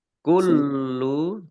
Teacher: Kullu lamnya dibaca double juga, ada tasdidnya.